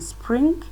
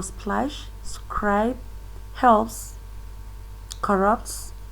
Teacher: that there are three consonants there without insertion of vowel between them that is they are pronounced at the same time also splash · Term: three consonants clusters